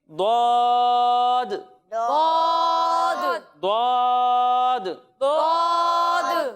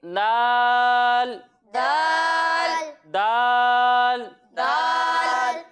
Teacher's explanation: ضاد کی جب ہم ادائیگی کریں گے تو آپ کو یہ معلوم ہے کہ ضاد حروف مستعلیہ میں سے ہے تو اسے ہم موٹا کر کر پڑھیں گے، اور دال حروف مستعلیہ میں سے نہیں ہے تو اسے ہم باریک پڑھیں گے